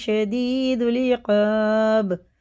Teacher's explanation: میں قلقلہ، یہ اللہ کا لام زبر سے پر پڑھیں گے اور یہ با میں قلقلہ ہے، سخت پڑھیں گے ، اس والے سے بھی زیادہ سے سخت پڑھیں گے کیونکہ